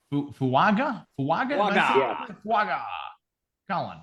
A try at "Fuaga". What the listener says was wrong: Fuaga. You got to put the N in there. Fuaga.